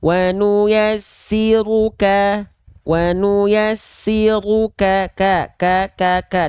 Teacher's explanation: Dia Hanya berupa percikan-percikan nafas saja